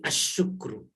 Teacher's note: karena sya-nya syamsiah maka alif lamnya jadi asyukru ya